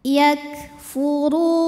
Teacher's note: sifat lain yang mempermudah yaitu sifat hams ada angin yang keluar jadi setelah suaranya keluar baru anginnya keluar untuk kafnya yang sukun